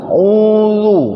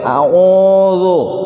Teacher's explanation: bunyi u-nya harus betul-betul monyong bibir kita semonyong-monyongnya